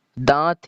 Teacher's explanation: یہ والا جو نون ہے یہ نون غنہ کا کام کرے گا